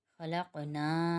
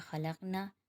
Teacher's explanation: اب اس کا آخری نا کو ایک الف کی مقدار کھینچیں گے، یعنی تھوڑا سا کھینچیں گے۔ اگر ہم اس کو کھینچے بغیر پڑھیں گے تو یہ ہو جائے گا خلقنا، اور اس کا مطلب بالکل الٹ ہو جائے گا، یعنی ان عورتوں نے پیدا کیا، یعنی مطلب کا بالکل ہی واضح فرق ہو گیا، نعوذ باللہ۔